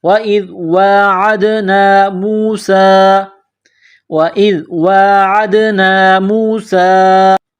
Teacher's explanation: سین میں سیٹی کی آواز پیدا کرنی ہے، سین کے اوپر مد ہے، تھوڑا اس کو کھینچنا ہے